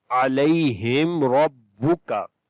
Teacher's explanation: عَلَيْهِمْ, on the meme we make izhar shafawi. After the meme sakin the next letter is ra, we make izhar shafawi, the clear sound of meme. Ra we read in heavy sound due to fatha on it.